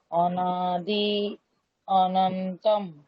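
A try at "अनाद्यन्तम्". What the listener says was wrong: অনন্তম নেই, অন্তম।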